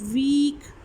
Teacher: अब जब ई बोला है तो आपकी टंग क्या थी, विद हाईएस्ट कांटेक्ट थी आपके रूफ के साथ, बस थोड़ा सा ही फासला रह जाता है. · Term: हाई वाउल्स